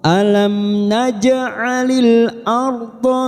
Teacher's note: pinggir lidah kita nempel pada gigi geraham atas boleh kanan boleh kiri